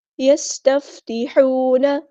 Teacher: ہا ہمارا وسطی ہے لیکن مڈل تھروٹ سے ادا کرنا ہے